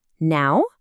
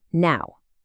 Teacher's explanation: If I say it with a rising pitch, now, it's a question. It means, hey, would it be okay if I came now?